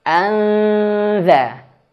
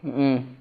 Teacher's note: Maka ketika ikhfa, anza, lidahnya udah dikeluarin dikit. Anza, seperti itu ya.